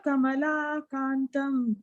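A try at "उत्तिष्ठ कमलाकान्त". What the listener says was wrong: Yeah, it is Kanta, not Kantam. Uttishta Kamala Kanta.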